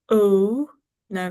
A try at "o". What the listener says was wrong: O, rounded. It's got like a W there.